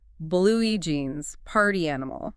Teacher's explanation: The stress moves forward to flag that familiar concept. · The guide says the stress shifts to the first word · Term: set phrases